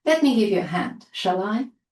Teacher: And we use shall I if we're offering to do something, which is always positive, obviously, and again with a rising intonation.